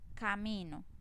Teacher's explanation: camino no tiene el acento en la última sílaba, sino en la penúltima. Entonces, todas estas palabras que tienen el acento en la penúltima sílaba son palabras graves.